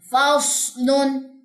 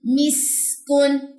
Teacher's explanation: صاد میں منہ بھرے گا، سین میں منہ نہیں بھرے گا.